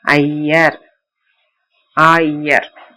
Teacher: ஐகார பொலி அகர இகரம் ஐகாரம் ஆகும். அகரத்தையும் இகரத்தையும் சேர்த்து சொல்ல அவை ஐகாரம் போல ஒளிக்கும்